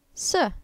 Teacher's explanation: That's a fast falling tone.